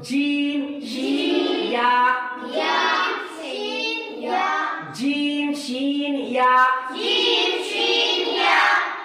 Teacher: जीम शीन या, इनके निकलने की जगह जबान का बीच ऊपर का तालु, जबान का बीच ऊपर का तालु। जब जबान का बीच ऊपर के तालु को हम लगाएंगे तो ऑटोमेटिक जीम भी अदा हो जाएगा, शीन भी अदा हो जाएगा और या भी अदा होगा।